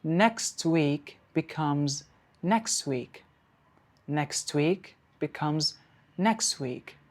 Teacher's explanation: So the t sound has been deleted. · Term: elision